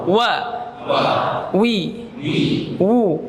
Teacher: dia punya sifat jahar, rakhawah, mengalir suaranya, istifal, infitah dan lin